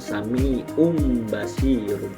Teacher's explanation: Nah, itu kan itu tanwin. Berhubung itu tanwinnya bertemu dengan huruf ba. Nah, maka diubah menjadi huruf mim. · perubahan bunyi nun mati atau tanwin menjadi mim yang tersembunyi dan disertai dengan dengung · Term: hukum iqlab, iklab